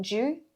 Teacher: If you're touching the tip of your tongue to the roof of your mouth, you'll be saying ju, j. Keep that tip down, you.